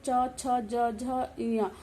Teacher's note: आपकी जो जीवा है वो तालु में बार बार लगती है और फिर इन वर्णों का उच्चारण होता है।